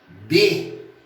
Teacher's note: Na hora que eu vou pronunciar B, os dois lábios vão se encontrar. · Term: consoante